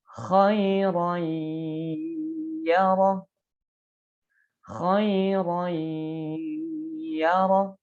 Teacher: Jadi ada penahanan dulu. Nun matinya lebur menjadi huruf ya, tetapi ada penahanan. Ya, dengan ada getaran yang dirasakan pada rongga hidung disertai dengan gunnah. Tanwin fathah bertemu dengan huruf ya.